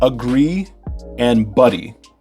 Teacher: In agree, it's the gree part that is stressed, but in buddy, it's the bud part that is stressed, okay? But there's still a rhyme between them, it's just not on the same stress, if that makes sense.